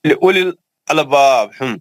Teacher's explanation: वाव भी नहीं पढ़ेंगे और लाम के बाद का या भी नहीं पढ़ेंगे, वो भी साइलेंट है